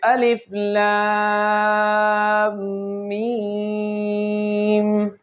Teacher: تو جب بھی سورت کے شروع میں یہ والے حروف آتے ہیں، جب بھی یہ حروف آئیں گے تو ان کو ہم نے ہمیشہ لمبا کر کے پڑھنا ہے، ان کو جھٹکے نہیں دینے، ان کو جلدی نہیں پڑھنا، بالکل آرام سے تحمل مزاجی کے ساتھ مد کو 5 الف کے برابر لمبا کرنا ہے